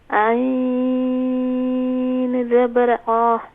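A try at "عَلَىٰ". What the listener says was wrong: عین زبر عا نہیں ہوگا, عین زبر ع. ع. زیادہ نہ کھینچیں, صرف ایک الف کی مقدار. علا.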